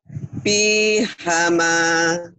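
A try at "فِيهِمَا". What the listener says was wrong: Bukan ha. Nah, lagi, Bu. Fihima.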